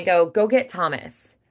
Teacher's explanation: when I go get Thomas, where I share the T, it's still clear, but it feels a little more natural. It flows a little more naturally.